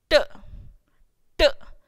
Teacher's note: Your tongue should touch the alveoli region, which is present at the back of your upper teeth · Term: alveolar sound